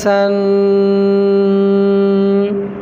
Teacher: سن ناک میں سے آواز نکل رہا ہے، اس کو کہتے ہیں گنہ